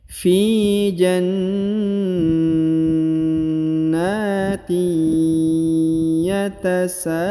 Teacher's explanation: huruf sa dipanjangkan 5 harokat karena di atasnya terdapat tanda bacaan panjang 5 harokat